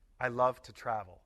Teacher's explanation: When to comes before a verb to form the infinitive, the vowel is usually reduced to the short weak sound uh. I love to travel.